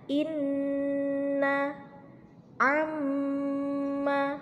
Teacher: Cara membacanya adalah didengungkan selama 1,5 alif atau 3 harokat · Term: gunnah